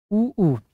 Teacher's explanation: ऊ गोलाकार वाला ओठ में आता ओट में आता है इसीलिए पूरा पूरा गोलाकार हो जाता है क्योंकि पूरी पूरी तरह से ओठ से ही बोला जाता है